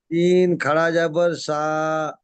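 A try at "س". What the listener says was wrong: ওটা তালবের স হয়ে যাচ্ছে, তালবের স হবে না, দন্তের স হবে।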